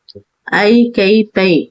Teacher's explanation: ஐகார எழுத்து தனித்து வரும் இடங்களில் தனக்குரிய இரண்டு மாத்திரை அளவில் முழுமையாக ஒளிக்கும். ஐ கை பை இங்கு தனித்து வந்தா தனக்குரிய இரண்டு மாத்திரை அளவு முழுமையாக ஒழிக்கும்.